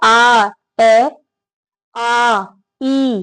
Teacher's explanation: जब आप बोलेंगे तो ए भी आगे बोला जाएगा ई भी आगे बोला जाएगा लेकिन आ पीछे बोला जाएगा